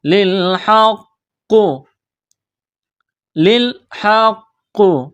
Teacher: قاف کو موٹا کرنا ہے، بڑا قاف ہے تشدید کی وجہ سے قاف کو دبانا ہے